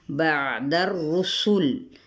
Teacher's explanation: عین ضرور وسط حلق سے ادا کرے، دال کی زبر کو را کے ساتھ، رسول۔